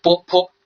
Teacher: 明显会觉得上唇和下唇呢是在碰撞一下，然后发出来的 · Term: 双唇音